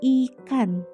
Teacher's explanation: huruf I diucapkan dengan lidah tidak menyentuh langit-langit mulut atau datar dengan bentuk mulut melebar.